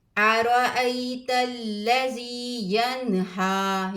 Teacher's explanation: نون ساکن کے بعد حروف ہلکی میں سے ہا آیا ہے تو یہاں پر اظہار کریں گے، غنہ نہیں کریں گے